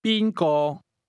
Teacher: The tones in who or whom go from the high level to the mid level.